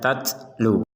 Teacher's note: Huruf ta harus ada nafas keluar sehingga dibaca tatlu.